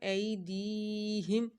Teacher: یا زیر دی ای دی ہا میم زیر ہم ایدیہم یہاں یا ساکن سے پہلے زیر آ رہی ہے تو یہاں پہ ایک الف کے برابر لمبا کیا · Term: مدہ